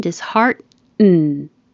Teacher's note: You don't have to say the T because the N is coming right after the T in the same position.